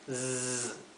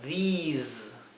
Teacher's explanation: these se pronuncia con una I larga, these, y al final es una S como un zumbido